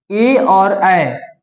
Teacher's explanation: कंठ से हवा निकलकर तालु में टकराकर तब बनता है ए ऐ। हवा जो निकलता है कंठ से टकराते हुए तालु में टकराता है तब निकलता है ए और ऐ का ध्वनि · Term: कंठ तालव्य